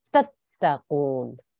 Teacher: We don't want to elongate this ta at all.